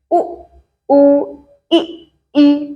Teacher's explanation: संवृत स्वर जिन्हें बोलने में आपका मुंह लगभग पूरा बंद रहे, जैसे उ, उ, ई।